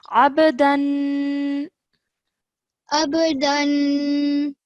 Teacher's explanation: Over here, just remember 2-second nasal sound because of the tanween